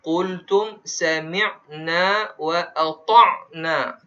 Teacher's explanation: Kena ada bunyi huruf ain. Kerana hamzah dan ain ni pada makhraj yang pada huruf halqum